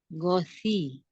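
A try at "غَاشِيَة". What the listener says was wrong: Masih kurang berisik ya shi-nya. Shi. Ghosyah.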